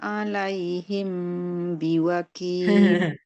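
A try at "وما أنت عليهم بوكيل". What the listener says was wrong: Nggak ada furjahnya itu. Rapat itu. Alaihim biwakil. Daripada yang sebelum-sebelumnya emang rapat banget. Oke, cuman ya itu dia memang kadang sebab kita belum ahli yang ada furja, sesekali dia boleh dapat ya, sesekali nggak dapat.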